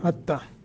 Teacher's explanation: ता मुशद्दत है, दो हरफों के कायम मकाम पढ़ना है